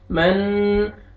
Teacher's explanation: नोज में sound लेके जाना है, इख्फा करना है